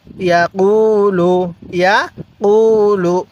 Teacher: পেশের পরে ওয়াও সাকিন এক আলিফ টানতে হয়